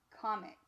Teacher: so again we typically would split right before that consonant and if you hear the word comics you'll hear that the m actually sounds like it's with the second syllable